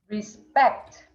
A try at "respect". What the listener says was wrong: Very good. Perfect.